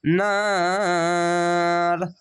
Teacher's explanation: আয়াত আছে থামতে হবে, তার জন্য শেষ সকল সাকিন দিবেন, দিয়ে 3 আলিফ টেনে পড়বেন।